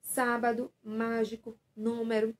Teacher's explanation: todas essas palavras a sílaba tônica está na antepenúltima posição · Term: proparoxítona